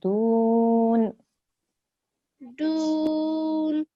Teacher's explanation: you have to elongate that dal before you join to the noon at the end